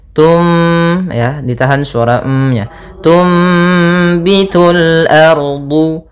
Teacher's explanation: cara membacanya adalah suara nunnya diganti dengan suara mim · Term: iklab